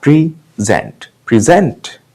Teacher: अगर हम इस प्रेजेंट वर्ड को वर्ब की तरह यूज करेंगे तो जो स्ट्रेस है वो सेकंड सिलेबल पे जाएगा। प्रेजेंट, प्रेजेंट, जेंट पे स्ट्रेस आया